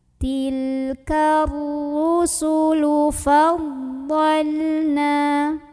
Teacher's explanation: ro ini dibaca secara tafkhim karena ro berbaris dan barisnya di atas maka bacanya ditebalkan dengan mengangkat pangkal lidah kita